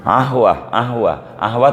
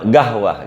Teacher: Malah orang Mesir asli itu qaf tuh jadi ain. Ahwa tuh orang kita gahwah gitu.